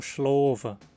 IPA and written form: ʃlovə (schlofe)